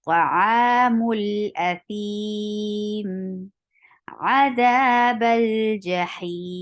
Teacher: we will join the letter before it and after it, and we will drop the Hamzatul Wasl when it is in between two words